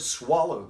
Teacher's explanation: That last syllable of swallow was almost inaudible